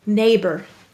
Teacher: schwa sound er in an unstressed syllable